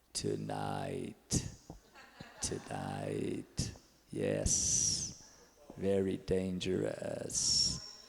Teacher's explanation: Então, as cordas estão vibrando numa parte, mas na outra não. E o laringalizado, as cordas, elas estão vibrando na parte anterior, mas estão fechadas na parte posterior. Então, é um som que parece assim de filme de terror.